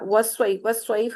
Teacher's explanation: یا ساکن سے پہلے زبر آئے گی نا تو وہ لین کا قاعدہ ہوتا ہے، اس کو نرمی سے ادا کرنا ہے